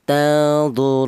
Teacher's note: boleh dibaca tawasud yaitu artinya sedang, yaitu 2 alif atau 4 harokat